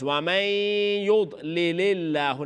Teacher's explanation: Now you're not doing the idgham through the nose. ومن يضلل الله, name of Allah, empty mouth.